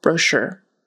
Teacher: That URE is more like an ER, brochure, with a long O in the front, brochure. But it's, the syllable stress is on the second syllable